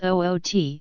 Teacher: the traditional accent of Newcastle upon Tyne, out will sound as oot, and in parts of Scotland and northwest England, my will be pronounced as me.